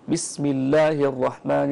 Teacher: اللام من لفظ الجلالة إذا سبق كسر أصلي غير عارض ترقق هذه اللام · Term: الترقيق